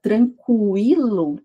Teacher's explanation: Agora na palavra tranquilo, eu falo a letra U separadamente. Então aqui eu tenho um ditongo.